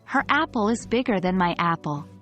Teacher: by stressing her, bigger, and my, we draw a comparison between the sizes of the two apples. Without the stress, the comparison would not be as clear.